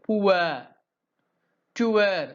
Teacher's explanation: The lips are weakly rounded.